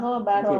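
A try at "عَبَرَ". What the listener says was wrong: Ain Bu, ain bukan gha. Walamma abara talutu an-nahra.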